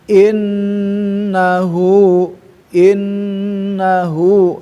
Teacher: Fasabbih bihamdibika wastagfiru. In nah itu ada nun bertasdid tahan. Karena itu masuk kepada alkhaisyum, rongga hidung